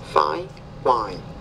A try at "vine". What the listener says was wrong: No, it's fine, vine. So when the V's at the beginning of the word, you need to pronounce that with more vibration. Vine, vine.